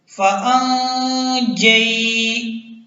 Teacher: نون ساکن کے بعد اگر جیم آ جائے گا تو وہاں پر اخفا ہوگا، غنہ ہوگا